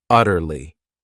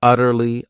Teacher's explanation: the stress is on that first syllable